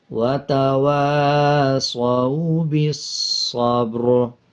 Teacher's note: جب را پہ وقف کریں گے تو را کو پر پڑھیں گے · با کے اوپر جزم آ رہا ہے، قلقلہ کریں گے